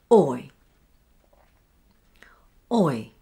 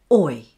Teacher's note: Making the or sound shorter than the second sound I. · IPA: /ɔɪ/